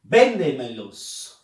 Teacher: Fuerza de voz en ven.